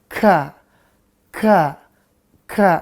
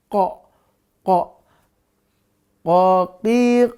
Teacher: untuk ka jangan lupa juga dia napasnya berhembus ka ka ka ya berhembus dia kalau Koo tertahan koo koo